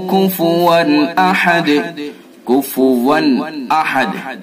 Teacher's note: ولم یکن لہ کفوا احد، کفوا احد، واو کے اوپر دو زبر ہے، اس کو تنوین بولتے ہیں، تو تنوین کے بعد حمزہ ہے، تو اس لیے اس کے اندر اظہار کریں گے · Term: اظہار حلقی